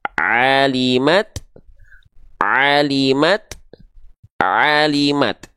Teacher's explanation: lafalkan dari tempat-tempatnya itu keluarnya beda ya gitu kita lanjutkan kembali maka pastikan Ain dilafalkan dari bagian tengahtenggorokan kita